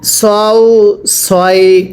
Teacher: সৎকে উচ্চারণের সময় ঠোঁটগুলো হালকা গোল হবে, পড়ুন। সৎ ওয়াও জবর সও।